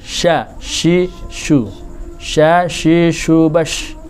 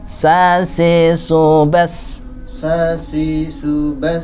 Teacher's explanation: Ambil dari seperti huruf jim, berarti tengahnya lidah, tengahnya ilat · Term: shin